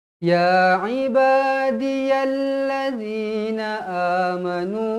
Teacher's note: Alif kecil mestilah dibaca dengan kadar dua harakat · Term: mad asli